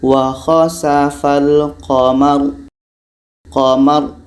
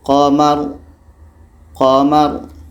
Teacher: bunyinya tebal karena lidah terangkat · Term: tebal tabkhim, tafkhim